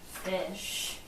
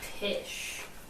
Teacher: when she tries to say an F it usually comes out as a p